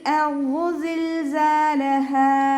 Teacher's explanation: ദാലിൻ്റെ കൂടെ അലിഫ് മദ് വന്നു, 2 കൗണ്ട് നീട്ടി കൊടുക്കുക.